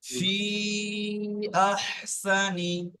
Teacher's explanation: দুই থেকে তিন আলিফ পরিমাণ টানতে হবে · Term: মুনফাসিল